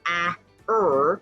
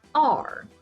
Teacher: that R is changing the vowel sound so now instead of being a it's going to be are